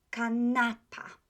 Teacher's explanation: The accent falls on the next to the last syllable, right? Penultimate.